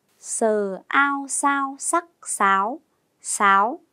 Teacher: Tiếng sáo gồm âm đầu sờ, vần ao và thanh sắc. Cô đánh vần và đọc trơn vần ao như sau: a o ao, ao.